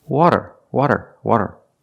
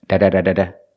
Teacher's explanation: It's not a rolled R. It's a flap T or a fast D.